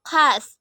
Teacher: Bunyi X dengan ciri-ciri mati, oral, frikatif